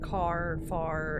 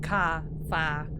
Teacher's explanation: We don't sound any final R in words like car, far, and phonetically our common pronunciation is indistinguishable from ka, fa. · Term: New England accent